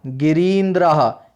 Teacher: यानी यहाँ पर रा पे दीर्घ ई आ गई है।